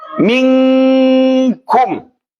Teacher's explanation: Di mulut tidak ada. Yang ada hanya dari hidung. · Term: idgham nakis